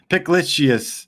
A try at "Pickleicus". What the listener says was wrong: There's a missing vowel between pick and lick.